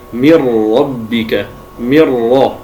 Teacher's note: لاحظ أن النون بكاملها دخلت في الراء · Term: الإدغام